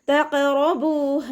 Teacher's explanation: റോ ഫതഹയാണ്, ഉയർത്തിയിട്ട് ഉച്ചരിക്കുക. റോ എന്നുള്ള sound തന്നെ കൊടുക്കുക